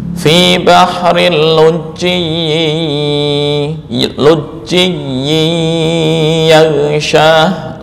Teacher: idgham tanpa tambahan apapun, yaitu idgham yang tidak disertai dengan ikhfa, tidak memperlihatkan gunnah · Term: idgham kamil